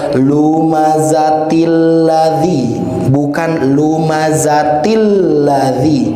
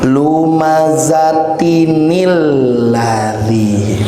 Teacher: Karena di sini ada tanwin, lumazatin ketemu dengan alif lam, harus dijembatani, harus diberikan akses huruf nun. Nun yang biasanya kita kenal dengan sebutan nun wiqayah ataupun nun wasal.